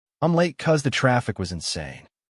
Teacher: Because often gets trimmed down to cuz.